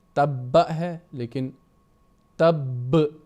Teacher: حرف مشدد پر وقف کرتے ہوئے اس کی حرکت ختم ہوگی، مگر تشدید ظاہر کرنے کے لیے آواز کو ذرا کھینچے